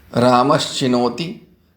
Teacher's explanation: रामस के दंत्य स के स्थान पर च का योग होने के कारण तालव्य श आदेश हो जाता है, तब रूप बनता है रामश धन चिनोति।